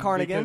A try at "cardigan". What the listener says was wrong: He thought instead of cardigan, the sweater, it's not carnigan with an N. It's with a D. Cardigan.